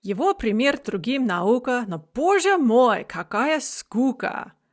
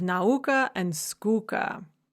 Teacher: And so we have this uka rhyme, and we have the stressed u followed by the unstressed ah. So that's a feminine rhyme.